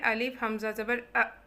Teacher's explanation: ठीक है, इसी तरह हमज़ा, इसको हम पढ़ेंगे अलिफ हमज़ा ज़बर इसमें हमने एक और चीज़ इसमें याद रखें कि हमज़ा जब साकिन होता है ना तो इसकी आवाज़ में झटका होता है। ठीक है, उससे फिर हमें पता चलता है कि हमने हमज़ा पढ़ा है, हमज़ा साकिन पढ़ा है।